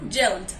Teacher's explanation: Si se dan cuenta, no suena el sonido de la E. El sonido de la E, de esta E que queda aquí, de la ed, se elimina.